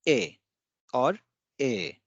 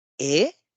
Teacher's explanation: that is flat or downward tone, it indicates a yes